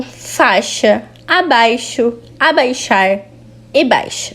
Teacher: No seguinte quadro, temos a distribuição do ditongo ai, no qual a semivogal só é cancelada frente ao fonema sh